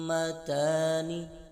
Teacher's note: آگے میم دال پیش مد ہا الف میم زبر ہام مدہام میم زبر ما مدہام تا کھڑا زبر تا نون زیرنی مدہامتانی ادھر بھی میم مشدد کا غنہ ہو رہا ہے اور ادھر مد لازم کا قاعدہ لگ رہا ہے، اس لیے اس کو 3 الف یعنی 6 حرکات کی مقدار کھینچ کر پڑھیں گے۔ اور میم دال پیش مد اس پر حروف قلقلہ ہو رہا ہے، اس لیے ادھر قلقلہ کر کر پڑھیں گے، کیونکہ قلقلہ کے 5 حروف تھے قاف طا با جیم دال، تو دال آ رہا ہے اس حروف قلقلہ میں سے، اس لیے ادھر حروف قلقلہ ہوگا۔